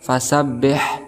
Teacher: ha ini juga termasuk huruf hamz, maka ada nafas yang keluar